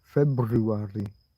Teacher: Most people don't pronounce the first R in February. And if someone does, it sounds a little bit like they're deliberately trying to be posh.